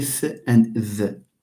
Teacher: you are placing the tip of your tongue between the upper teeth and the lower teeth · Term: inter dental